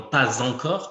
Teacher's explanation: Et les lettres S, X et Z, qui sont normalement muettes, en général à la fin des mots, vont être prononcées Z